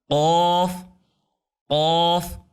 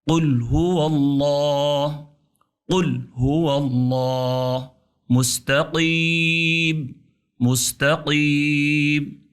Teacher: کاف پتلا ہے، جس پہ نقطے نہیں ہیں وہ باریک ہے، اور جس پہ نقطے ہیں قاف دو نقطی، وہ پرحجم اور موٹا حرف ہے، قاف قاف۔ یہ زبان کی جڑ، کوے کی جڑ سے ٹکرائے تو قاف ادا ہوگا